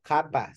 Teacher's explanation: formed by pushing up the middle of the tongue against the soft part of the roof of the mouth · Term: velar